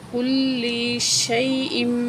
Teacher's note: اللہ کو موٹا کر کے پڑھیں گے، وَكَانَ اللَّهُ عَلَىٰ كُلِّ، لام کو جو ہے سختی سے پڑھیں گے، تشدید اوپر